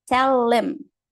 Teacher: Consoante conectando com som de vogal. Consoante conectando com som de vogal também, no caso de tell. E aqui a gente tem o caso do him, em que a gente, em him, her, a gente vai tirar o som do H muitas vezes.